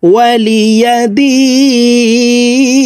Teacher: এখানে 3 আলিফ টেনে নুনকে সাকিন করতে হবে কারণ মদের হরফের বামের হরফে ওয়াকফ হইলে মধ্যে আরজি 3 আলিফ